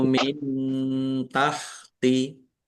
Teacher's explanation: nun sukun bertemu dengan huruf ta. Bacaan ikhfa dibaca samar-samar.